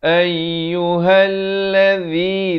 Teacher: Ayyuhalladzi, zi di hujung lidah.